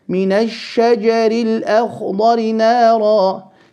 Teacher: Straight into the sheen, so the lam of al, the sound of the lam falls away